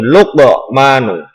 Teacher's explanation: Cara membacanya adalah membalik atau membentuk huruf qaf, yaitu Luqmanu, jadi dipantulkan. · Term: qalqalah sughra